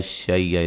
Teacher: شی لین ہے، وقفاً بڑی مد کے ساتھ پڑھ سکتے ہیں ، حمزہ کی آواز آئے گی اینڈ پہ، شی، ٹھیک ہے،